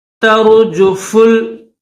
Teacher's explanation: تر، جو فل جیم کے اوپر پیش ہے اور فا کے اوپر بھی پیش ہے، فا کو لام کے ساتھ ملائیں گے، درمیان میں یہ الف نہیں پڑھیں گے